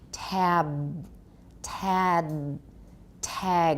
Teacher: I want you to put full voicing on that final voice stop